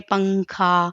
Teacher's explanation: اس کے بعد حروف اخفا کے یہ 15 حروف میں سے کوئی ایک حرف آ جائے تو نون کی آواز کو ناک میں چھپا کر پڑھنا چاہیے، یعنی نوک زبان تالو سے ہٹا کر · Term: غنہ